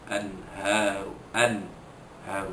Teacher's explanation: wajib menyatakan nun mati bertemu dengan huruf ha tanpa dengung. Haru itu mad tabi'i, ada pada tulisan, ada pada bacaan walaupun tiada pada tulisan. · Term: izhar halqi